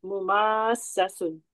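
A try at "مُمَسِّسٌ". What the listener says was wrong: Betul.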